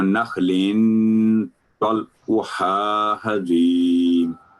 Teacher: نخل اخفا ہونا تھا آپ نے یہاں نخل اظہار کیا نخل طلعها کیونکہ آگے تنوین کے بعد طا ہے جو کہ حروف حلقے میں سے نہیں ہے تو نخل طلعها حدیم.